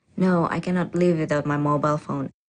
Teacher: in response to the first question the answer is definite and this certainty is expressed with a flat or level tone